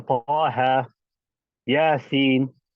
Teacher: the harakat of hayyun tahur, you only extend them naturally. You don't give them 4 or 6 harakat.